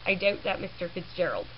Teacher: Very hard R's, but the vowels are really diphthong, very drawn out, multiple syllables in one vowel. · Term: Bristol accent